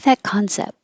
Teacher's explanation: You don't have to say the T because your lips are closing for the P and you can just end there.